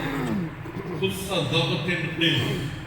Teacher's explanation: ان حروف کو ادا کرتے وقت زبان کی جڑ تالو سے لگ جاتی ہے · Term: حروف استعلاء